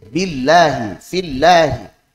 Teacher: Jadi kalau setelah kasrah maka lamnya tipis.